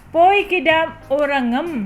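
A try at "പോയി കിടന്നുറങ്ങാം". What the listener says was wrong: Poi kidam no. Poi kidannu urangam. Not N M. This is double N. M is this one. N is this one. Double N. Poi kidannu urangam.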